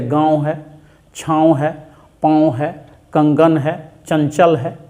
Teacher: नाक और मुंह से बोले जाने वाले स्वर वर्णों को हम अनुनासिक कहते हैं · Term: अनुनासिक स्वर